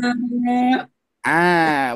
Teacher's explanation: Jadi dia tidak ada desisan yang keluar ketika mengucapkan huruf hamzah